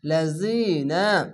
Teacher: জেরের পাশে ইয়া সাকিন এক আলিফ টেনে পড়বেন। লাম জবর লা, জাল জি, লাজি, নুন জবর না, লাযিনা।